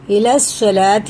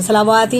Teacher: سیدھا لام سواد میں لگے گا کیونکہ سواد پہ ہی شد لگی ہے، اور یہ واو نہیں پڑھا جائے گا۔ الی الصلاۃ ایسے پڑھیں گے، صلواتی نہیں پڑھیں گے، بھلے ہی یہ کھڑا زبر نیچے کی طرف آ رہا ہے، یہ لام کا ہی الی الصلاۃ ہے، صلواتی نہیں ہے۔